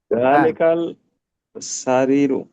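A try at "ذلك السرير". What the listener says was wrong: জালিকাস, এখানে সিন থাকলে আলিফ লাম সাইন হবে। জালিকাস, জালিকাস সারিরু, জালিকাস সারিরু।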